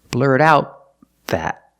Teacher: The T in out is a stop T because the next sound is a consonant. · The TH in that is a consonant, so the T in out is pronounced as a stop T.